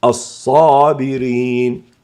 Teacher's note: اجتمعت في الصاد صفة الاستعلاء والإطباق لأن الصاد حرف استعلاء وإطباق، بالإضافة إلى الفتح بالإضافة إلى الآ، فتفخم وننطقها الصابرين.